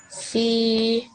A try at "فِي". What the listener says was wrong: Okay, that's not correct. That's not how you pronounce it. Okay, this is a fa, the letter fa, but with it has a kasra underneath it, and a kasra should only be said for 1 second. Okay, you learned this last week, so make sure that your timing is really, really good.